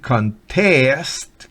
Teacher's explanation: con el acento en la última sílaba y significa competir o concursar